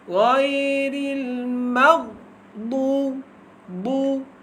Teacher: jangan bagi qalqalah kepada huruf ghain